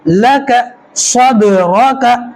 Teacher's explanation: دال کے اوپر جزم ہے، قلقلہ کریں گے